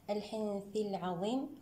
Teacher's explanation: حكمه الإخفاء الحقيقي بغنة مرققة المرتبة الوسطى